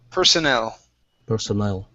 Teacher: this word is pronounced personnel. The stress is at the very end.